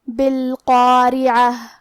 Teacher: یہاں حرف القاف ہے اور اس کے بعد مد الف ہے، لہذا ہمیں یہ دونوں حرف کو تفخیم سے مطلب بھاری آواز میں پڑھنا ہے. بالقارعہ. حرف را کے نیچے زیر ہے تو یہاں را کا حکم ہے ترقیق. · حرف را کے نیچے زیر ہے تو یہاں را کا حکم ہے ترقیق. ہم را کو پتلی آواز میں پڑھیں گے. آخری میں یہ کلمہ پہ رکیں گے تو اس پہ ہاتھ سے رکیں گے.